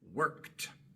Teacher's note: Al pronunciar la K no usamos las cuerdas vocales, es puro aire. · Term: la K es sorda